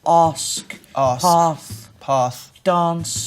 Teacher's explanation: It's a list of words that change from our ah sound to aw. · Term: Ask List